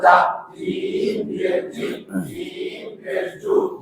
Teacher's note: জিম জিব্বার মাঝখান থেকে শক্ত ভাবে আদায় জিম জবর জা জিম জিব্বার মাঝখান থেকে শক্ত ভাবে আদায় জিম